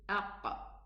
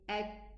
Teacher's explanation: The makhraj closed because it's a hard letter, and then we need to open it. So the qaf opens with a qalqala, but the kaf opens with hams.